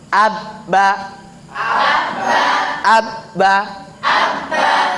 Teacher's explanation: tempat keluarnya makhraj huruf ba yaitu ada di kedua bibir